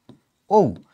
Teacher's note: যখন তুমি হচ্ছে ঐ অথবা ঔ উচ্চারণ করতে যাচ্ছ তখন কিন্তু এখানে দুইটা করে স্বরধ্বনি চলে আসতেছে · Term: যৌগিক